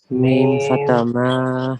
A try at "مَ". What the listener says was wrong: Now, why are you stretching it? It's simple fatha. Simple fatha. When coming a simple fatha, then don't stretch that.